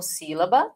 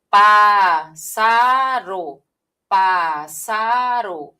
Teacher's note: Uma posição, duas posições, a terceira posição é mais forte.